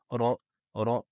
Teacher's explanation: l'arrière de la langue va se gonfler vers le fond du palais la langue va monter vers le fond du palais ici ro · la lettre ro se prononce avec le bout de la langue qui rentre en contact avec le début du palais elle est emphatique on a dit donc l'arrière de la langue va se gonfler